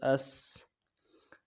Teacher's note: حمزہ سین زبر اس، اور سین میں آواز جاری رہے گی، جزم ہے آواز جاری رہے گی۔ · حمزہ سین زبر اس، سین سیٹی پوری ادا کرنا ہے اور سیٹی باریک ہوگی۔ سین کا مخرج ہے دونوں دانتوں کو ملانا ہے اوپر اور نیچے کے، اور بیچ میں سے ہوا نکلے گی سیٹی کی۔